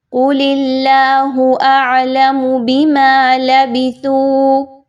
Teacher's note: اللہ کے حرف سے پہلے اس کے زیر ہے تو اس کو باریک پڑھیے، موٹا نہیں پڑھنا۔ اعلم میں عین اچھے سے واضح ہونی چاہیے۔